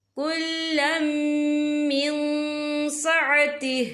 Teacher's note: اور آگے دیکھیں من، یہاں نون ساکن ہے، نون ساکن کے بعد جو ہے سین آ رہا ہے، اور سین جو ہے اکفا کا ورڈ ہے تو ہم یہاں اکفا کریں گے، نون ساکن کی آواز کو ناک میں چھپائیں گے۔